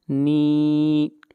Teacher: نون کو کھینچ کر پڑھیں گے ایک الف کے برابر، یہاں پر یا مدہ ہے۔